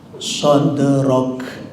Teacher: Kaf yang dimatikan itu keluar hamas. Begitu juga tak yang dimatikan keluar hamas.